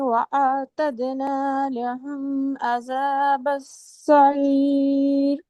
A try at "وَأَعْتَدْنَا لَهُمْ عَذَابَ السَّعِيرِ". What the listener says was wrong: شاباش، اور لہم کو تھوڑا سا آپ نے ہا کے لے گئی ہیں، یہاں سے دوبارہ پڑھیں، وَأَعْتَدْنَا۔